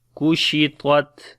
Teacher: Ta we read in heavy sound and on the Ta we make Shiddat and Hams quality.